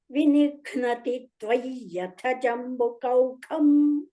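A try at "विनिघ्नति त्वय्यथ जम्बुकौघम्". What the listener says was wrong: ತ್ವಾಗೆ ದಿತ್ವ miss ಆಯ್ತು correct ಇದೆ 10th ಶ್ಲೋಕ ಸೆಕೆಂಡ್ ಪಾದ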